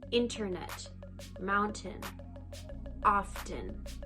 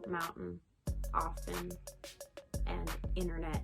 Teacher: in Canada, more often than not, we pronounce the T's in our word, like in the middle of a word, such as internet, mountain, often. · In American English, they usually omit this T sound.